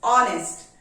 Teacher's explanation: In the word honest, H is silent. So the word is starting with O sound, honest. And O is a vowel sound.